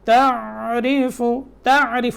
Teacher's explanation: عین میں قلقلے کی آواز نہیں آنی چاہیے، یہاں عین کو ساکن کرنا ہے بس